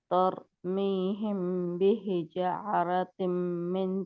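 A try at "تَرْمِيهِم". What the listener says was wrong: आप तर तर नहीं करना, क्योंकि ये इसका तकरार बहुत ज्यादा हो जाता है।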